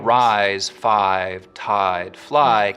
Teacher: words like rise five tied fly keep their full eye diphthong